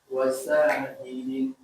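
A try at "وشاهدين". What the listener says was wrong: Sya-nya panjang. Wasya.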